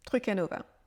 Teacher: Truc à Nova, il est prononcé comme si c'était un seul mot